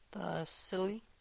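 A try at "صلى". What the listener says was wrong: Sili. Be careful. If you pronounce it with an S, it'll be different.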